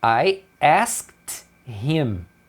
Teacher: o him, que é o pronome ele, dentro de uma frase eles vão tirar o H e aí você escuta só um M. Isso acontece porque a pessoa vai emendar em alguma coisa.